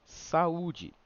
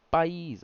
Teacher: O hiato, ele é aquele onde a gente tem duas vogais que se juntam em uma palavra, mas em sílabas separadas